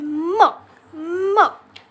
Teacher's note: आहे त्यानंतर sound alphabet आहे म ला सुद्धा म नाही म्हणायचं याचा उच्चार करताना दोघेही ओठ बंद करायचे आणि मग साऊंड काढायचा आहे